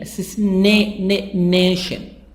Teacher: So assassination, stress on NA, assassination.